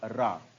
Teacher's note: जीभ ऊपर उठती है और लुढ़क कर नीचे आती है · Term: लुंठित वर्ण